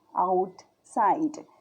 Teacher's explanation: The word out side has 4 vowels, but the E is silent and the OU is diphthong, which counts as only one sound. So this word has only 2 vowel sounds and therefore 2 syllables. Outside. అవుట్సైడ్లో మనకి మొత్తం 1 2 3 4 vowels ఉన్నా కానీ మనం పలికేటప్పుడు ఓయు అని చదవట్లేదు, ఆవు.